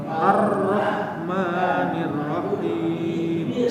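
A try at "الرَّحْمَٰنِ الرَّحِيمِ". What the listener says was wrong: Nah, haknya jangan seolah-olah ada tasydidnya, Pak. Ar-Rahmanir-Rahim. Nah, itu berarti huruf rahim, huruf haknya ada tasydidnya. Bukan rahim tapi rahi. Rahi.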